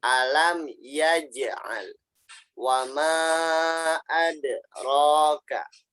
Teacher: Ini adalah contoh qalqalah sugro. Sugro itu artinya sogiron, artinya kecil. Jadi pantulannya kecil.